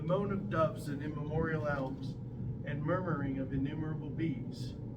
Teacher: that particular poem has 10 syllables that alternate unstressed stress